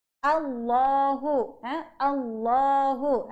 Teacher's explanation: Allahu, bukan Allah, bukan O. Alif atas bunyi A.